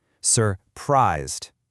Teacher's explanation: Our dictionaries dictate that the lexical stress is on the second syllable. So when our brain decides to emphasize the word, our acoustic hardware automatically makes that second syllable louder, longer, and higher pitched.